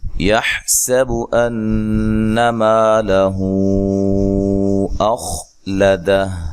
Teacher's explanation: ہا کو واضح نکالنا ہے لیکن ہلانا نہیں ہے، سین کو باریک سیٹی سے ادا کرنا ہے۔